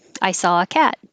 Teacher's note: they're putting the emphasis on the important word which would be cat